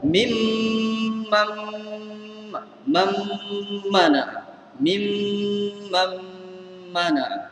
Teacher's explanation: Jadi nun tak bunyi dah sebab nun diserak masuk dalam mim. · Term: idgham